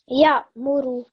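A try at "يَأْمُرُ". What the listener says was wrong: Ya'muru. So here ra, again it has the ma, so try to thicken it.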